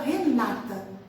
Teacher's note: É uma palavra não acentuada, mas que a gente, por hábito, pela própria língua, pela questão da própria língua, a gente sabe que, por ser paroxítona, né, uma língua de caráter paroxítono, a gente vai colocar a tônica na penúltima sílaba, né? Então, a gente fala Renata, certo?